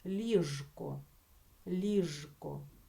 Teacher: звук Ж Отже у слові ліжко також маємо написати букву ж і це слово вимовляти з дзвінким звуком ж